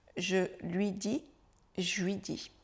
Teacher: La lettre que l'on a contractée, que l'on fait disparaître ici, c'est le L de lui.